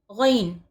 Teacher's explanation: غین حلق کے اوپری حصے سے غین ادا ہوتا ہے · गन हलक के ऊपरी हिस्से से गन अदा होता है